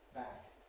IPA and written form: bæk (back)